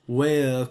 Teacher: it's a triphthong, but you have to pronounce it as a single, single nucleus